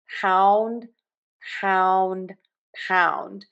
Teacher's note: Now for pound. Open wide for that vowel and then move to puckered lips. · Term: ow vowel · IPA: /paʊnd/